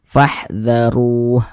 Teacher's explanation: huruf ro yang memiliki tanda baca dhammah maka dibaca tabkhim, dibaca tebal, sehingga pangkalisan kita itu naik terangkat ke atas ketika kita mengucapkannya.